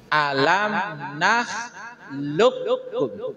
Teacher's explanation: Yang tadinya ada bunyi qalqalah, sekarang sudah tidak nampak lagi qalqalahnya, langsung masuk ke kaf. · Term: idgham mutaqariban